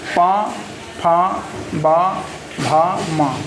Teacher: दोनों होंठ मिलाकर बोले जाते हैं।